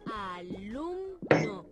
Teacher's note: Lo que tenemos que pronunciar con más fuerza de las tres es lum. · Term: sílaba tónica